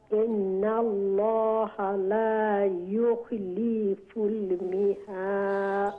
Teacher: ইন্না তো ওয়াজিব গুন্না করছেন